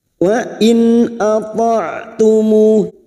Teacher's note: nun sukun bertemu hamzah. Dibaca jelas tanpa mendengung. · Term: idhar